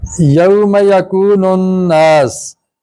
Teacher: यहाँ पे गुन्ना हो रहा है। नून शद वाली हो तो उस पर गुन्ना होता है। गुन्ने का क्या मतलब है? नाक से आवाज जरा लंबी करके अदा करना।